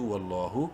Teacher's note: لام کو بولڈ اور ایک الف کے برابر لمبا کریں گے کھڑی زبر کی وجہ سے